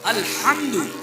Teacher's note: اس میں بڑی ہا ہے جو حلق سے نکلے، ہاتھ لگائیں گے تو گرم ہوا نکلے ، اس کا مطلب ہے بڑی ہا نکل رہی، اور اگر